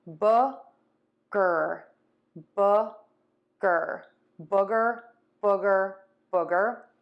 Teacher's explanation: my lips are rounded, but they're more relaxed. My tongue is more relaxed, and my cheeks are more relaxed. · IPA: /ˈbʊɡər/